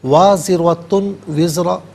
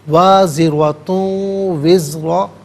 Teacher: تا پر دو پیش کی تنوین ہے، اسے وزرا کے واو کے ساتھ ملائیں گے، واو کی آواز کو غنے کے ساتھ ادا کریں گے، یہاں یرملون کا قاعدہ اپلائی ہوگا۔